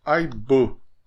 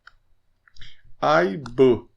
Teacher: É um som um pouquinho diferente que nós temos no xavante e em alguns outros idiomas também. E fica entre o a e o e. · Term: vogal média